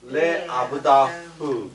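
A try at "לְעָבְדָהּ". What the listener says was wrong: 여기서 레가 붙어버리니까 오르 발음을 해야 되겠네. 레 오브다흐 해봐봐.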